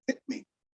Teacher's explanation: It's not a phoneme. We don't have a phoneme that is that glottal stop where it slaps shut. It's just an allophone of T.